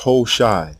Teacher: known as HOSA they wrote aai in Acadian this tells us the initial ha in this name was almost silent because of the stress on the long o vowel in the opening syllable